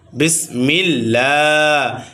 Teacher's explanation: ও লাম চিকন হবে কারণ আল্লাহ সাথে লামের পূর্বে জের আসছে